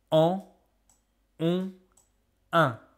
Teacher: Nasal means from the nose. So these are the three vowels that make sound that comes from your nose. Because when you pronounce these sounds, you can feel the little bones in your nose vibrating. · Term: voyelles nasales